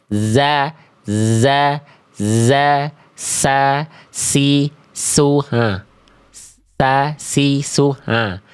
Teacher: huruf sin keluar dari ujung lidah sejajar dengan gigi seri bawah.